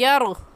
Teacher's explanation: रा को पुर करके पढ़ना है, और पुर करने का तरीका कि आपके दोनों होंठ गोल हो जाए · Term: रा साकिन